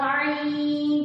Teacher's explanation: اگر یہاں پہ اگر آپ ہاتھ رکھیں گے اور عین پڑھیں گے تو آپ کو گلے میں وائبریشن سی فیل ہوگی، اس کا مخرج حلق ہے